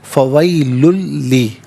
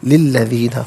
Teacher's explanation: لی الذین، فویلن میں لام پر دو پیش کی تنوین ہے، اس لیے للذین کے لام کے ساتھ ملائیں گے اور لام کی آواز کو ادا کیا جائے گا